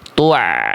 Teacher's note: Kalau ain pertengahan suara, jadi suaranya tengah-tengah antara mengalir dan tidak, jadi sedikit mengalir.